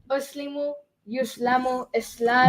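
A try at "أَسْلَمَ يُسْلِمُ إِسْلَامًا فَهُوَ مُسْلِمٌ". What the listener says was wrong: Wait, uslimu. The first word will never end with u. First word never ends with, because the past tense is always nasara, right? So it's never nasaru, So it's got to end with a.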